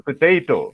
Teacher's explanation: P, it is P sound, not po, potato. So, stress is on the second syllable